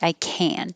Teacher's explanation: if you can hear the vowel ah it's negative if you can't hear the vowel ah it's positive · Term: canned positive